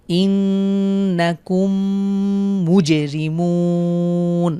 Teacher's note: মুজে এখানে কলকলা করব আমরা